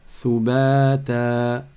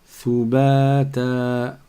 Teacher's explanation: Donc le ta, comme en début de mot, ta est suivi d'une prolongation, d'un med, qui est le alif. Ça fait thubata.